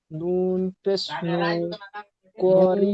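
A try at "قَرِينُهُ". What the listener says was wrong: নুন পেশ নু। নুন টান হবে না।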